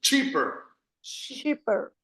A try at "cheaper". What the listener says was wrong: No haga shh, sino del tren. Cheaper.